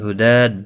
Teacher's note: ہدا دال کے اوپر کھڑی زبر ہے، ایک الف کی مقدار کے برابر کھینچ کر پڑھیں گے۔ ہم نیم ساکن کے بعد واو آیا ہے، اظہار شفوی ہوگا۔